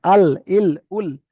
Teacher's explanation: সামনের উপরের দাঁতের গলার সঙ্গে লাগিয়ে লাম এখানে উচ্চারণ হয়